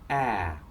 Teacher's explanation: it's called open because your tongue is dropped and there is a very wide space between your tongue and the roof of your mouth